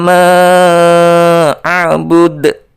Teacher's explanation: dipantulkan karena huruf Dal itu adalah huruf Qalqalah